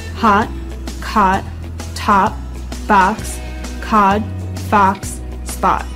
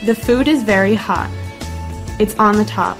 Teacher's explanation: Another big difference is with the O sound. In British English, it's a rounded vowel sound. However, in American English, it isn't so rounded.